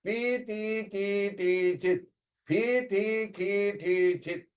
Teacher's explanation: You will find that in pi ti ki ti chit, the ikar swara or the note remains the same.